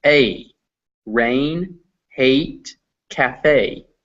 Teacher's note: It's made of 2 vowels fused together. It's pronounced A, rain, hate, cafe.